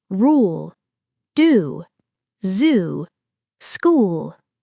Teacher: This is the long tense ooh sound. The lips round, the tongue raises high and back, and the sound lasts longer. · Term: long tense /uː/ sound